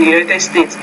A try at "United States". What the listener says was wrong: So today I ended up being a medical doctor practicing in, when you say the United States, United States, you need to make that vowel sound longer than what you're doing.